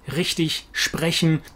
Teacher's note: the German R that comes from the throat